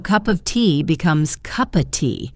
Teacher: the V in OF is often dropped before a consonant, so cup of tea becomes cuppa tea.